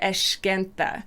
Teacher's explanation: if you're coming from rio the accent in rio tends to put a sh sound on that rather than eskenta